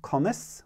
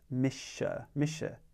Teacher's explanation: with the word mischa misha you'll notice on either side it's flanked by slender vowels i and e so as a slender sound or a front sound it's soft s